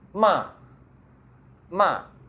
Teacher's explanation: Fourth tone, ma ma means to scold, to insult.